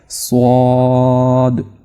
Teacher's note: ये जो स्वाद है ना ये थोड़ा सा मोटा पढ़ा जाता है यानी पुर पढ़ा जाता है। अपने मुंह को आपने भरकर इसको अदा करना है।